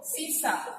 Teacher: इसका उच्चारण करते समय जीभ जो है वो दंत मूल से टकरा रही है।